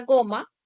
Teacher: Luego tienes la oclusiva velar sonora.